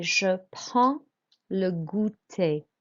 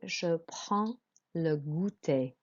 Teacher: With prends, you don't pronounce the D and the S. You're not pronouncing consonants at the end.